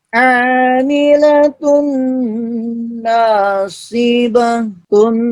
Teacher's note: dengungan, jadi dengungnya keluar di hidung